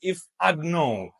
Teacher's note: sometimes native speakers they even drop the D